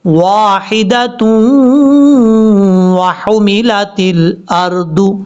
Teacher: تا کو جب واو سے کنیکٹ کریں گے تو یہاں پر ادغام یرملون کا غنہ ہوگا